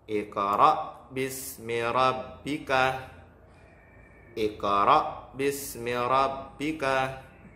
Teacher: qalqalah sughra itu berada di tengah ayat dan dibaca dengan memantul yang ringan, memantulnya kecil seperti itu. Biasanya qalqalah sughra itu yaitu huruf qalqalahnya di tengah ayat dan berharokat sukun mati.